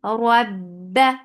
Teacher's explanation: Ba will get sifa of shidda. The sound will cut off abruptly. Rab. For fatha upon jaws.